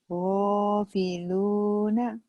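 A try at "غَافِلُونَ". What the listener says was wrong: Gofiluna. Ini lagunya jadi rendah lagi.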